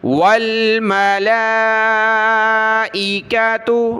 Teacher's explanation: لام پر کھڑا زبر مد ہے، اس کو زیادہ کھینچنا ہے